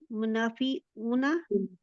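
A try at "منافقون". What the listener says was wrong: मुनाफिकूना काफ है ना,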